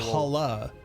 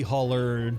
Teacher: We hit the R. We hit the rhotic R.